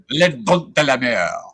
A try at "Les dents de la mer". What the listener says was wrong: No, don. Don. Don't pronounce the T.